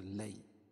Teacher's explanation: یا ساکن سے پہلے زبر ہو تو یا لین ہوتا ہے، اس کو نرم آواز کے ساتھ جلدی پڑھتے ہیں